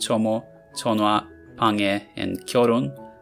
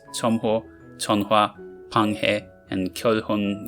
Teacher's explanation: If hiet follows a sonorant, it can be overtaken by the preceding consonant, so these words can be pronounced tomo, tonwa, pange, and kyoron, but regular pronunciations tomho, tonhwa, panghe, and kyolhon are also correct.